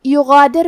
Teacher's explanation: کلمت یغادر میں حرف الغین ہے، ہم حرف الغین کو حلق کے اوپر والے حصے سے پڑھیں گے